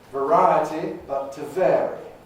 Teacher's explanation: You can see how the last vowel in vary is the weak form of the I in variety.